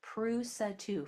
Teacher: I'm just leaving my mouth open at the end instead of closing it with a with a D. It's just ooh at the end.